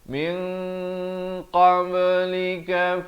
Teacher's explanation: nun mati bertemu qaf dibacakan dengan samar dan tebal 2 harakat. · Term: ikhfa hakiki